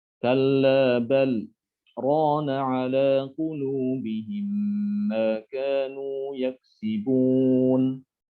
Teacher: Jadi berhenti pada lam sukun tanpa mengambil nafas. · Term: saktah